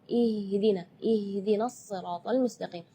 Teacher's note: Ya, itu tidak boleh, itu keluarnya dari dada. Sedangkan makhraj huruf H itu adalah dari tenggorokan.